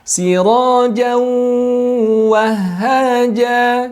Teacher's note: tanwin bertemu dengan wawu bertasydid, maka berikutnya adalah tahan 2 harokat untuk menyempurnakan kaidah gunnahnya